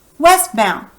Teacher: do you hear West is the loudest syllable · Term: primary accent